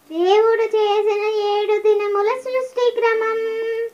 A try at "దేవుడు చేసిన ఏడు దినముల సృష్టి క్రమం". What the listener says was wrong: అది చివరిలో దీర్ఘం రావాలి, ఓకేనా? మళ్ళీ సృష్టి క్రమం చూడండి, సృష్టి క్రమం సృష్టి క్రమం సృష్టి క్రమం సృష్టి క్రమం దేవుడు చేసిన ఏడు దినముల సృష్టి క్రమం.